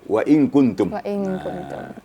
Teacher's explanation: Kalau nun mati bertemu kaf sedikit tipis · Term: ikhfa hakiki